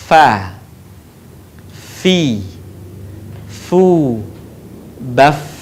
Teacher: huruf Fa keluar dengan menyentuhkan ujung dua gigi seri bagian atas dengan bibir bawah bagian dalam diucapkan dengan mengalirkan suara sekaligus dengan udaranya dengan lembut Fa fi